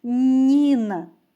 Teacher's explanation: доріжку на чотири звука перший звук у слові Ніна звук нь він який приголосний м'який пам'ятаємо що приголосні звуки перед голосним і пом'якшуються позначаємо його двома рисочками наступний звук у слові Ніна і голосний